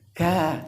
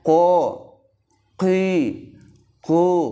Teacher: Jadi karena datar pangkal lidah sehingga bibir ini tidak maju seperti orang senyum. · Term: huruf kaf